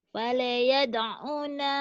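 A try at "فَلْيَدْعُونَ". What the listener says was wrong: Fal, jangan ada e-nya. Fal, fal yad'u. Ada e-nya tuh. Fal, fal, fal, fal. Kok ada nempel ya filenya itu ada le. Fal. Caranya ngilanginnya adalah disentak di jeda antar fal, yad'una diyahu.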